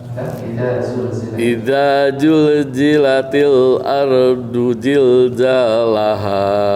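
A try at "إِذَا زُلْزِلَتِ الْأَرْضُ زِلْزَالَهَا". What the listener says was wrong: Coba za. Zi. Zu. Idza zul. Nah, tinggal di zilzalnya. Zilzalaha. Jadi bedakan antara jim dan zai.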